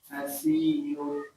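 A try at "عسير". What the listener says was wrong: ainnya maksudnya jelas ya, asi, pendek ainnya, asi, ulangi, ainnya pendek, asirun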